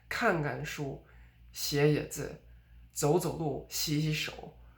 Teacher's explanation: you would stress the first verb, but not the second one. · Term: repeated verbs